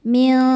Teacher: insana sa hukumnya mad thobii zohiri karena ada alif didahului fathah maka sinnya panjang dua harakat insana min berikutnya ada ikhfa hakiki ausat karena nun sukun bertemu shad cara bacanya nun disamarkan menuju shad disertai dengungan dengung dan kesamaran nya sama besar